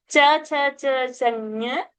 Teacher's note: Palatal sound, but from the nose. Anunasika it is called.